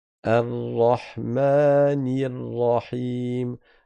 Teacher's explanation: Donc le l du alif lam ne se prononce pas. · Le lem, il est caché, enfin, il est fusionné dans le Ra. C'est parce que le Ra est une lettre solaire. · on va pas faire de roulement sur la lettre Ra et on va pas prononcer le lem. Le lem, il est caché, enfin, il est fusionné dans le Ra.